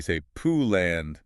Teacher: We round our lips tight at the very end. That's the glide.